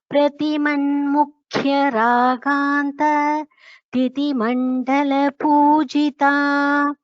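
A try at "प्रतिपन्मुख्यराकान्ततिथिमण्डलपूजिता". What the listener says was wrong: Bhagini, here don't take a pause after this kanta.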